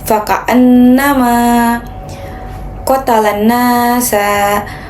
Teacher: Cara membacanya adalah dengan menahan suara dan menggunakan dengung dari hidung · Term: gunnah